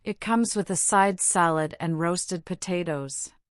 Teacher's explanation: you list the items with a slight pause or a rising tone between them. This makes your speech clear and easy to follow.